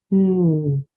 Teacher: sound for n is be careful that it's not nah again your jaw shouldn't drop there's no uh on the end